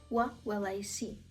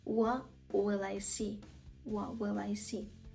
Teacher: слово What букву т на кінці не вимовляємо